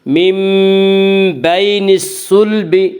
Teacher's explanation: یالین وہ یا جو ساکن اس سے پہلے زبر ہو، یالین کو نرم آواز کے ساتھ پڑھیں گے